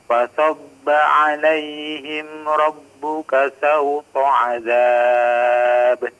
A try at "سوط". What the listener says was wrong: Sawto diperjelas sa huruf sinnya.